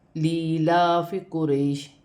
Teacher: لیلاف قریش، یہاں پہ یا مدہ ہے، یا ساکن سے پہلے زیر آ رہی ہے تو یا مدہ بنتا ہے، اسے 1 الف کی مقدار کھینچ کر پڑھا جاتا ہے، لیکن لوگ لام کو لام کے ساتھ ملا کر پڑھ لیتے ہیں، اور یہاں کھڑی زبر ہے، اسے بھی 1 الف کی مقدار کھینچ کر پڑھا جائے گا۔